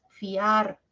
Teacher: ya pero es un diptongo Por qué es un diptongo porque de las dos vocales la abierta la a suena más